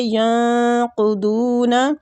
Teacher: ینقضون ادھر نون جو ہے ساکنہ ہے تو ادھر ہو رہا ہے اخفاء حقیقی، نون کو چھپائیں گے ، قدون قاف اور ضاد دونوں مستعلیہ حروف ہیں، پر پڑھنے